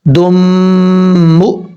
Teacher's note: دو نون ساکن اور نون تنوین کے بعد، یہاں نون تنوین کے بعد میم ہے، ادغام ہوگا، ادغام یرملون ایک الف کی مقدار غنہ کر کے پڑھا جائے گا۔